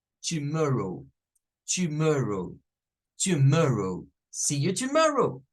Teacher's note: la primera que está la par de la t va a sonar con un shua